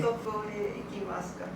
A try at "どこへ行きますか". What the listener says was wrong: Okay, your どこへ sounds like Tokyo へ。どこへ Okay, so where? Not Tokyo.